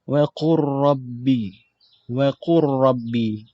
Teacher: Kita masukkan huruf lam ke dalam huruf ra secara sempurna. Sehingga tak ada, seolah-olah huruf lam tu tak ada pembunyinya. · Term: idgham kamil